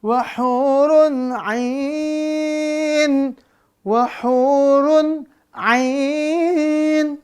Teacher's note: Izhar di situ. Maka nggak boleh dengung, nggak boleh idgham. Harus jelas bunyi nun sukun atau tanwinnya.